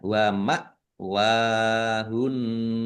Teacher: Wawu fathah berdiri. Mad thobi'i panjang dua harakat.